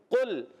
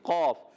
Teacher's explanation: قاف ادا ہوتا ہے زبان کی جڑ اور تالو کے نرم حصے سے